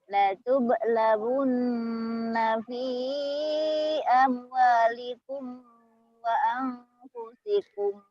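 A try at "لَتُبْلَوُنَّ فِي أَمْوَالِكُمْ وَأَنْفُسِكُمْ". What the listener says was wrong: Komnya ingat ya, idhar sapawi. Jangan ditahan. Latublawunna fi amwalikum wa anfusikum. Komnya jangan ditahan. Idhar sapawi. Idhar yang sangat.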